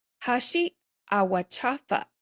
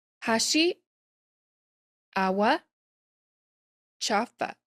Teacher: Notice chafa gets cut off at the end. It has a glottal stop.